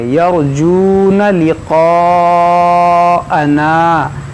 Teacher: واو ساکن سے پہلے پیش ہے، اس کو کھینچیں گے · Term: واو مدہ